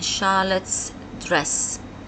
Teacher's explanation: The S here is pronounced as se because Charlotte ends with t, a voiceless consonant. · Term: singular possessive